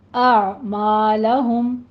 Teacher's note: حمزہ کی ساؤنڈ پہلے نکلے گی، اس کے بعد عین وسط حلق میں سے ادا ہوگا · عین نہیں نکل رہا، آپ منہ کھولیے تھوڑا سا، اعمالہم، اور عین پہ قلقلہ بھی نہیں کرنا، بس سٹاپ کرنا ہے، وسط حلق میں جب آواز جائے گی تو سٹاپ ہو جائے گی